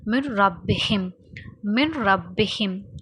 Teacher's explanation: இதோட சேர்த்து இத்காம் முத்தகாரிபைனோட சட்டமும் வருது. ஏன்னா சுக்குன் பெற்ற நூனும் ஹரக்கத்து பெற்ற ராவும் பக்கத்தில் வந்துச்சுன்னா ஒரே சத்தத்தை தான் கொடுக்கும் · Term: இத்காம் பிலா குன்னா